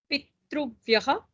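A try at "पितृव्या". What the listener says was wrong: Where did you read Pitruvyaha? Pitruvya. Drag the akara a little bit. Pitruvya.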